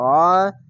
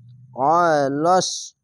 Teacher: আইনটিকে মোটা করে এবং গলা চিপে পড়বেন আইন জবর অ আলিফের মতন উচ্চারণ করবেন না